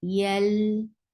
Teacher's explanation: Lam will get sifa of tawassut, and tawassut is a medium flow of sound.